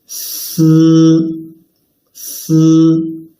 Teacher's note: When pronouncing 思, the front part of the tongue tip stays away from the inner surface of the upper teeth all along, leaving a gap for the air flow to get through.